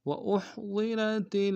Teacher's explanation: ہا کو گہرائی سے ادا کریں گے، ضاد کو موٹا ادا کریں گے، را کو موٹا ادا کریں گے